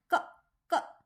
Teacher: स्वर किसके साथ मैच हो गया ना, क क। अगर मैं सिर्फ क बोलती और उसके साथ में अ नहीं लगाती तो क की ध्वनि पूर्ण नहीं निकलती